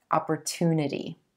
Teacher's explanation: A lot of you have asked me if this is a CH sound, opportunity, but in American English, we use a true T here, opportunity, and emphasizing that oo as in blue sound in that 3rd syllable